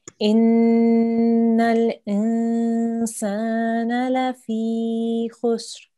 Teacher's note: the next letter is not a letter of the throat. So we need to hold and make a soft nasal sound